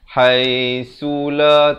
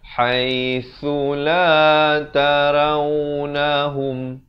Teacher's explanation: su di hujung lidah